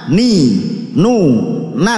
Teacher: hujung lidah mengenai gusi gigi depan atas menjadi makhraj huruf nun